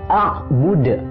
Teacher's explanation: dal sukun di akhir itu adalah qalqalah kubro, jadi harus dibaca mantul.